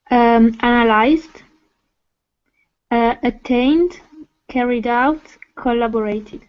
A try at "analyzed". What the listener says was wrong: Maybe the only small thing was the intonation of analyzed.